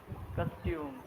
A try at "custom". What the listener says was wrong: Costume. Okay, it is not costume. It is custom. It is custom. Custom. So it is pronounced as custom. Custom. K sound.